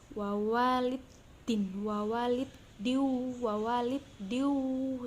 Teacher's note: Terus yang selanjutnya ada idgham bi gunnah karena hukum dal berharokat kasroh tanwin bertemu huruf waw dibaca masuk dengan dengung dan ditahan sampai 3 harokat